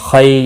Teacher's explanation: खई यालीन है, थोड़ा नरमी के साथ अदा करेंगे